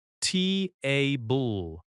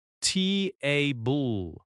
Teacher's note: Think about the word table. In American English, we stress the first syllable.